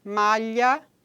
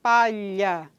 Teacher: da da língua toca no nosso palato palha não é então esse segmento aí é lateral palatal vozeado